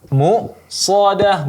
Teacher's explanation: di sini hamzah yang sukun, bukan huruf ain ya, maka di sini ditekankan bunyi hamzahnya yang sukun. Muqsadah, bukan mu'sadah, tapi muqsadah ya, dan di sini sifatnya syiddah, maka sedikit ditekan.